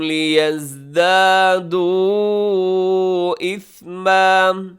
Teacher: جو مد ہے لیزدادو میں بھی یہ مد منفصل ہے، چھوٹی مد